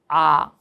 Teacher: 그런데 아라고 할 때 어떻게 돼? 턱이 아래로 내려가면서